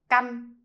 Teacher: So basically, it's still the A sound, but with a shorter and more nosy sound.